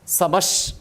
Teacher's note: प्रजापति समः, एक ही पद है, प्रजापति समः श्रीमान। वो समः विसर्ग जो है वो सकार हो गया, तालव्य शकार है, इसीलिए तालव्य शकार ही हो गया